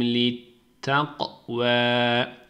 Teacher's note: Kafa vurgu yapıyoruz kalkale